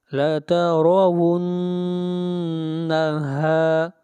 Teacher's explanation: ہا الف زبر ہا، یہ مد اصلی ہے، اس کو 1 الف کے برابر کھینچ کر پڑھیں گے